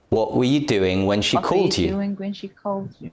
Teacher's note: what doing and called are stressed were and you are weak the u on the end is not stressed but not weak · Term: stress and weak forms